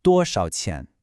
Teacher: 少 often becomes a neutral tone here, so it's very quick.